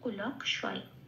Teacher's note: কয় হসন্তটা লয়ের সাথে জুড়ে উচ্চারিত হবে লক বলে, তাহলে পেলাম কুলক। আর পেটকাটা মূর্ধন্য সটা যেমন আছে সেটা পড়ে রইল, সেটা অন্তঃস্থিকার সাথে যুক্ত হয়ে হলো শয়, তাহলে শব্দটা পেলাম কুলক শয়।